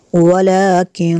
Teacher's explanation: نون ساکن کے بعد کاف حروف اخفاء میں سے ہے، اس لیے یہاں پہ غنہ کریں گے